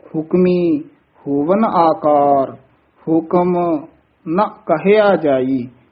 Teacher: ਸਾਰੇ ਹੁਕਮੀ ਪਦ ਤੇ ਜਮਕ ਲਾ ਕੇ ਬੋਲਣਾ ਹੈ